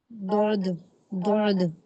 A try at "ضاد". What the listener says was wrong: যে এটা আইনের মতন এত ভিতরে নিতে হবে না, শুধু আপনি জিহ্বার একটা পাশ ব্যবহার করে দোয়াদ মানে মোটা করে পড়বেন, কিন্তু আইনের মতো আপনাকে একদম ভিতর থেকে উচ্চারণ করতে হবে না।